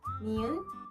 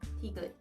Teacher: The same shape of your mouth, the air should come from your nose for nian, through your mouth for tigit. Nian, tigit.